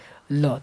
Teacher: जहां से दांत हमारी जमी है ना, मूल जो दंत मूल है, वहां पे जाके जीभ जाकर टच कर रहा है